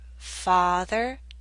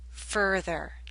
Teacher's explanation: the a in Father makes you open your mouth more